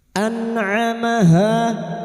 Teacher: Anamaha bedakan hamzah dan ain ya. Jangan disamakan hamzah dan ain. Huruf ain wastul halqi atau tengah tenggorokan. · Nun sukun bertemu ain idhar halqi. Nun sukun dibaca jelas tanpa mendengung.